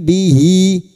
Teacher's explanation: ha damir yang berharakat panjang dan tidak bertemu hamzah namanya mad silah khasirah dua harakat kita panjangkan